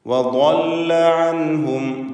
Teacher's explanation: ഇസ്തിതാല എന്ന സിഫത്തുള്ള ദ്വാദ് വ്യക്തമായി ശ്രദ്ധിച്ചുച്ചരിക്കുക.